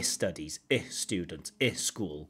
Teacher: she still has this I before the s